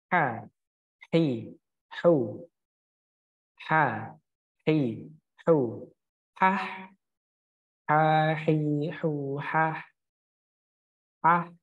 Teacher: makhrajnya tetap konsisten pada tenggorokan bagian tengah